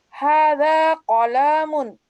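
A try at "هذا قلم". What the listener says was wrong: Jangan qalam. Haza qalamun. Qalam. Tidak panjang.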